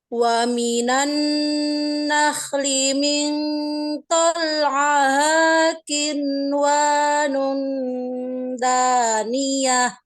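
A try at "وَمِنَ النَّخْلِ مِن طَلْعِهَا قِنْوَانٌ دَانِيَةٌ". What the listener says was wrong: Ini boleh. Dengungnya kurang tebal. Terus ini dari ain ke ha itu nggak kedengeran sama sekali. Dengernya ya tolah. Nggak ada huruf ha-nya.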